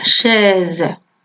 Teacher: con una E un poquito abierta, chaise